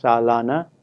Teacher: the middle syllable is stressed and the duration is more than the first syllable. Not only that, the first syllable has a reduced vowel in fast speech.